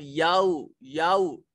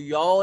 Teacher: बिल्लाही वाल याऊ, याऊ इसको यौ नहीं पढ़ेंगे, याऊ वाव साकिन माकबल मफ्तू या वाव लीन है, एक अलिफ के बराबर लंबा करेंगे